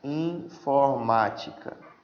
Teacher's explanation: Proparoxítona. A sílaba mais forte é a antepenúltima.